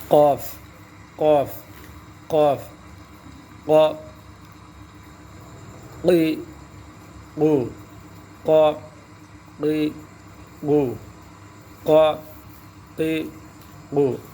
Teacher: قاف زبان کی جو جڑ ہے، زبان کی جو جڑ ہے گلے کی طرف، تو زبان کی جو جڑ ہے اس کو اوپر سے ملانا ہے، اوپر کے تالو سے. جو ایک چھوٹا سا جو کوا جس کو کہتے ہیں، وہ جہاں زبان کی جڑ ہے وہاں کوے سے ایک جو ہے لوتھڑا جو سچ ہے تھوڑا سا، اس کو کوا کہتے اردو میں، اس کے ساتھ ملانا ہے.